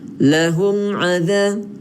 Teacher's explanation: Lahum adza, seolah-olah kita dengung satu harakat. Seolah-olah dia tidak dengung, tapi kita baca macam dengung satu harakat sebab kita nak jelaskan huruf mim ni. · Kalau cara yang detail dia adalah izhar syafawi. Apabila mim mati bertemu selain mim dan ba, maka dia tidak dengung. Dia kena jelaskan bunyi mim tu.